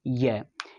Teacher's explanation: So, palatal, or in palatal, the front of the tongue, come together. The front of the tongue and the hard palate come together to produce sound.